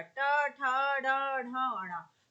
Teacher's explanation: तो कुछ भी आ जाए, आप कहें आपका ठा आ गया तो कहेंगे मूर्धा से उच्चारित होता है, डा आ जाए, ढा आ जाए तो कहां से उच्चारित होता है, मूर्धा से उच्चारित होता है